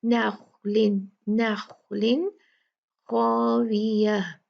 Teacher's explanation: ہا اور خا یہ دونوں حلق سے نکلنے والے حروف ہیں، تو تنوین کو اور نون ساکن کو کلیئر پڑھا جائے گا. خا ہیوی ہے، نخلن نخلن خاویہ.